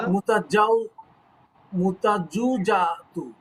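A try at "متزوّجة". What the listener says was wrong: এই ওয়াই এর উপরে একটা তাসদিদ আছে, ওয়াই এর উপরে তাসদিদ আছে এবং জের। মুতাজাউ ই যা, মুতাজাউ ই জাতু, তুন, মুতাজাউ ই জাতুন।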